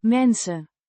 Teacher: means people or persons, pronounced men-suh. with a short E sound in men and a soft s sound followed by a short u sound